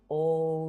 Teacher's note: When you say O your mouth is in that nice round position, but your tongue is flat and towards the back.